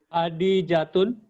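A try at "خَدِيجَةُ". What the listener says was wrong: Khadi. Itu kho. Khadijatu. Setiap nama perempuan tidak boleh tanwin, ya. Setiap nama perempuan kaidahnya tidak boleh tanwin. Khadijatu.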